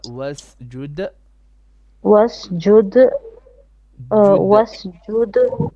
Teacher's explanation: Make your wasjud, make your dal a bit more flat with قلقلة